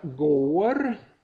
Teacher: så är det en lång vokal och en kort konsonant efter